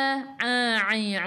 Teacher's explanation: a'i'u daripada kerongkong, bukan daripada hidung